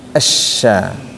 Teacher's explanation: Tafasyi itu artinya suaranya menyebar.